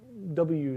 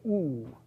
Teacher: if you just freeze yourself in W space, you're making an oo, right? A W is like a oo sped up. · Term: glide